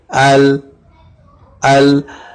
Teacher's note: زبان کی نوک کو ثنائے رباعیہ، انیاب یا زواحق کے مسڑوں کو لگانے سے لام ادا ہوگا